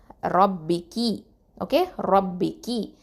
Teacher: ரா வந்து தஃப்ஹீம் வல்லினமாக ஓதணும்.